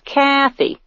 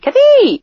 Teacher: the emphasis is on the first syllable